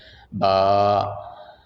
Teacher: با کا مخرج یہ دونوں ہونٹوں کو آپس میں ملانا ہے، ہونٹوں کے اندر والا حصہ تری والا، با ادا ہوگا